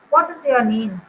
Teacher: when I'm saying name, the tune is going downwards, it is falling